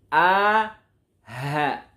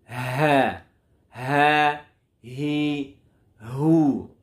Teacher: Yang pertama kita bahas dari aqsal halqi, dari pangkal kerongkongan kita. Di sini keluar huruf a dan ha.